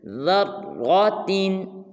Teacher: را کو را مشدد کے ساتھ ملائیں گے اور را کو پر ادا کریں گے